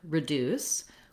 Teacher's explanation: So looking at the word reduce, we have second syllable stress. And so the deuce syllable is long and has a clear vowel, and the r syllable is short and has a reduced vowel.